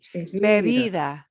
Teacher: I'll get a harder sort of B, but then a softer one in the second B.